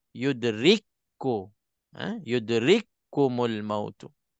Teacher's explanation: Di sini kaf mati bertemu dengan kaf. Jadi kaf kita idghamkan masuk dalam kaf. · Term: idgham mutamathilain